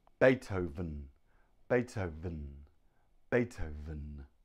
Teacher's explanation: bottom lip here on your bottom lip and breathe Beethoven Beethoven the V is made by putting your teeth on your bottom lip and it vibrates vibrates vibrates so one two three Beethoven Beethoven Beethoven now next